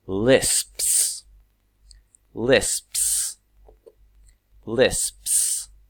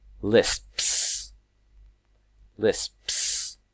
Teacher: the PS almost is combined into a single sound